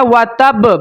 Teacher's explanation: با کے اوپر قلقلہ ہوگا، کون سا؟ قلقلہ اکبر